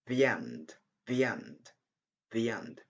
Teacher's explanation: We have the sound yeah between the and the end. It's better to say the end instead of saying the and the end.